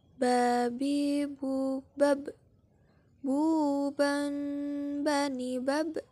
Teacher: cara melafalkan huruf ba' dengan merapatkan kedua bibir kita